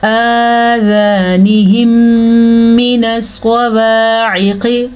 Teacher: میم ساکن ہے، دوبارہ پھر میم آ گیا ہے، میم متحرک آ گئی ہے تو ان کو آپس میں ملا دیں گے تبھی شد پیدا ہوگی، اور اس کے اوپر غنہ بھی کریں گے۔ اس قاعدے کو ادغام شفوی کہتے ہیں۔